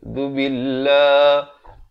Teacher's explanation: zal bari dhammah di hujung lidah